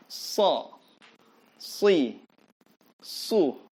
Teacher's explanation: so itu dia bunyinya seperti orang yang mau bersiul, tapi siulnya tidak mau keluar